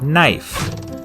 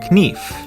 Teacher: In Middle English, it was pronounced knief, but after the vowel shift, the K became silent and the E turned to the diphthong I. As you can see, while the pronunciation of the word has changed, the spelling has not. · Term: silent letters